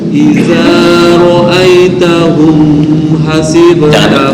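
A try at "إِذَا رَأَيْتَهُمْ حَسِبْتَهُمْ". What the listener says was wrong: Jangan dengung. Ini idhar semua nih. Idhar. Jangan dengung.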